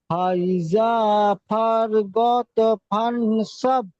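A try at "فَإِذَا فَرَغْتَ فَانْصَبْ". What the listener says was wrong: ফরগত হয়ে যাচ্ছে, দেখেন, র গইন জবর রগ, তা জবর তা, রগতা, ফারগতা, ফাসব, ফাইজা ফারগতা ফাসব। তা ছেড়ে গেল, ফারগতা। তাফা, দেখেন এখানে, ফাইজা ফারগতা ফা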